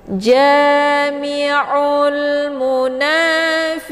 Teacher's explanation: Fiqi, ya sukun sebelumnya harokat kisra dinamakan dengan mad tabi'i zahiri, dibaca panjang 2 harokat. Untuk qaf bacaannya adalah ditebalkan, makhrajnya di pangkal lidah. Pangkal lidahnya menempel dengan langit yang lunak.